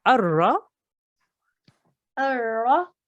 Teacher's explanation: So we are not going to say this lam at all. We're going to ignore this lam completely. We will go from the alif and join it directly to the ra. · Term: blank lam